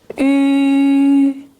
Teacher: Ü, rounded lips, high tongue slightly further back.